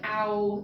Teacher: that's changing spot from a low to a high mid vowel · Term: diphthong